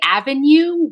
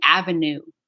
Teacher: I would say avenue with the nya, with the yod